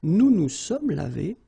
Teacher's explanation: So remember, final S is not pronounced.